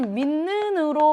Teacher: 니은의 영향을 받아서 디귿이 니은으로 바뀌는 거지. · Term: 비음화